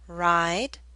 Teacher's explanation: The I in ride should be longer because the D is a voiced consonant.